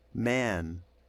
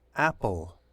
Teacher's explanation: the a plus the N or M gives you the nasalized A and um with apple it's just the regular a